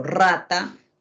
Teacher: cuando yo digo rata, mi lengua vibra, corriendo, mi lengua vibra